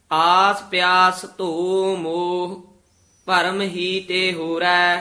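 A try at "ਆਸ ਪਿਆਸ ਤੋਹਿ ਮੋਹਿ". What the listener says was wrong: हाहे पूरे बोलने हन। आस प्यास तोह मोह परम ही ते होरै।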